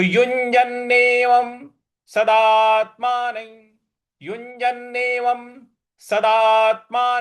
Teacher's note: न के ऊपर जो अनुस्वार है उसके आगे य लिखा हुआ है इसलिए उस अनुस्वार को य इस प्रकार से हम उच्चारण करेंगे